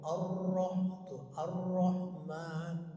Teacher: cirinya tebal itu mengarah kepada O ya, Ar-Roh tuh, Ar-Rahman tuh gitu. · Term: ro tafkhim